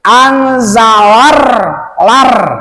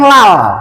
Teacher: Berarti secara pembacaan kalau ada huruf sesudah lam ada yang dimusaddah, maka secara pembacaan lamnya dihilangkan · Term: alif lam samsiyah